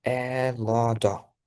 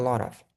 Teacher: Ayniqsa American accentda ko'rgan edigan oltin qoida T qachonki ikkita unli tovushni o'rtasida kelsa D talaffuz qilinadi